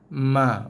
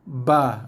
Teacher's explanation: Ma, sentuhan dua bibir tapi sekadar sentuhan yang ringan dan lembut. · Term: bunyi ma